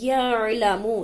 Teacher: اب اکثر لوگ یعلم پڑھ دیتے ہیں، یعنی کہ میم کو واو مدہ کے ساتھ کھینچ کر پڑھ دیتے ہیں. یعلم سادی پیش ہے اس لیے اس کو نہیں کھینچیں گے